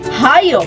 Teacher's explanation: ang babagtingang tinig ay nagdidiit o naglalapit at hinaharang o inaabala ang presyon na papalabas na hininga upang lumikha ng paimpit o pasutsot na tunog. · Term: glutal